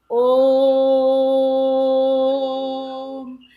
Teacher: तो आ जो बीच का सुनाई दे रहा है वो ही प्लुप्त स्वर है